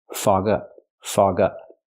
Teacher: It's a phrasal verb, so you stress both words. Fog up. Not fog up, but fog up.